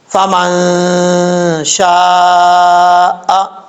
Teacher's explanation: اخفا کا مطلب ہوتا ہے آواز کو ناک میں چھپا کر پڑھنے کو اخفا کہا جاتا ہے۔ یہاں پر نون ساکن کا اخفا ہے تو آواز کو ناک میں چھپائیں گے